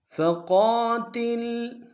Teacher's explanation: فقا میں قاف کو موٹا ادا کریں گے، قاف کے ساتھ الف مدہ ایک ہندار میں کھینچیں گے